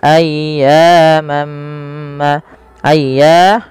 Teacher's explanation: panjangkan suara ynya sepanjang dua harakat karena ya mad thii